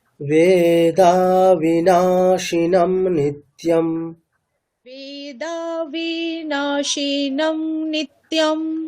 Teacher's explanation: আমি কিন্তু বেদা বিনা, বিতে এতটুকুও টানছি না, শিনম শীতে এতটুকুও টানছি না। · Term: হ্রস্ব বর্ণ